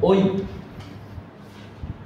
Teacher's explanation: আমরা দুটি স্বরধ্বনি একই সাথে উচ্চারণ করে ফেলছি, একটা ও একটা ই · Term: যৌগিক স্বরধ্বনি